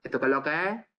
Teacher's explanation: Pues se escuchan vocales abiertas, que no existen en español como tal, solamente la emite en un rango dialectal concreto